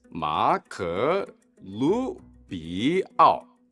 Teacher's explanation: Emphasis on the Lu, note the the the rising tone.